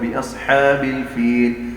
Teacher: ہم الف کو موٹا نہیں پڑھ رہے جو کہ با کے بعد آ رہا ہے